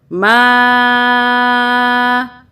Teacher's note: بڑی مدہ ہے، 5 الف کے برابر کھینچیں گے